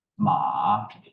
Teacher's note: ma is constant pit ma is rising pitch Ma so first down and then up